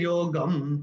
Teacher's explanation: ग के ऊपर अनुस्वार चरण की समाप्ति पे आ रहा है तो इसका उच्चारण केवल और केवल म ही होगा